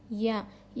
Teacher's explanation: زال پر زیر ہے نہیں کھینچیں گے. یا یا زبان کے بیچ کے حصے سے ادا ہوتا ہے. یا پر جزم ہے.